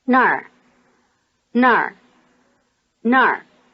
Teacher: Notice that the word for there, nar, is just like the word for where, nar, except that it has the falling tone instead of the low tone.